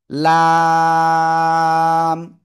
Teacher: এই অক্ষরটা উচ্চারণ হবে জিহ্বার আগার কিনারা, উপরের মাড়ির দাঁত, এই যে এই পাশে এটা, এই মাড়ির দাঁতের সাথে লাগবে, লাগে চার আলিফ টেনে পড়তে হবে, লাগিয়ে চার আলিফ টেনে পড়বো।